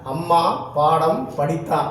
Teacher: அம்மா, பாடம், படித்தான் ஆகிய சொற்களில் மகர மெய்யெழுத்து தனக்குரிய அரை மாத்திரை அளவிலிருந்து முழுமையாக ஒலிக்கிறது